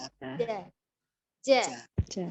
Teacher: dia jelas tidak ada udara yang mengalir ketika mengucapkan huruf jim. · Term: al-jahru